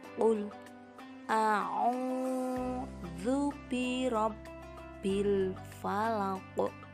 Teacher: Perhatikan pula tanda baca tasydid yang berada pada huruf ba. Maka cara membacanya haruslah ganda. Pada akhir ayat terdapat bacaan qalqalah kubro, yaitu pada lafal al-falaq.